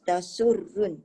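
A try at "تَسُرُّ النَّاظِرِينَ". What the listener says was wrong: Ra tebal Jangan tasurrun. Ra tu tebal.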